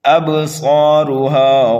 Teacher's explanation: با حروف قلقلہ میں سے ہے، یہاں پر قلقلہ صغیرہ ہوگا، صاد کو ایک الف کے برابر کھینچ کر کے پڑھیں گے اور یہ حروف مستعلیہ میں سے ہے، اس لیے موٹا کر کے پڑھا جائے گا۔